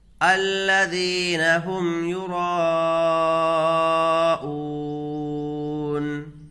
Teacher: حروف مدہ کے بعد حمزہ اسی کلمے میں ہے تو مد متصل ہوگا، اس کو کھینچ کر کے پڑھیں گے